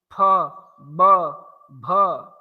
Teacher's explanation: तो इन अक्षरों में तो ये हवा कहीं ना कहीं रुकती है, फिर वहां से निकलती है। तो स्वर में ऐसा नहीं होता, और व्यंजन में हवा कहीं ना कहीं से टच होकर के निकलती है।